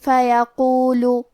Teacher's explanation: کلمت فیقول میں حرف القاف کی ادائیگی زبان کے جڑ اور تالو کے نرم حصے سے ہے. کیونکہ قاف حروف التفخیم میں سے ہے تو ہم یہ حرف کو موٹی آواز میں پڑھیں گے. آخری میں حرف اللام پہ پیش ہے تو ہمیں پیش کو ظاہر کرنا ہے.